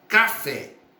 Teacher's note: Café, sílaba tônica, fé, última sílaba. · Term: oxítona